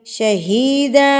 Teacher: دو زبر پہ جب بھی وقف کریں گے تو ایک الف پڑھا جائے گا، یعنی لمبا کر کے پڑھا جائے گا